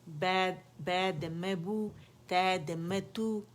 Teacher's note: फिर हरफ मज़मूम के लिए हम क्या करते हैं कि हम लिप्स को मुकम्मल गोल कर लेते हैं और फ्रंट में फॉरवर्ड आउटवर्ड पुश करते हैं इन्हें, ताकि मुकम्मल गोलाई आए।